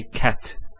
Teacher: So we say cat. So the T doesn't have any vowel associated with it. It's actually just a stop on the T. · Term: sukun